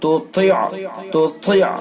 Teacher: طا کے اندر صفت استعلا یعنی بلندی کے ساتھ اس کو پڑھیں گے، پر کر کے پڑھیں گے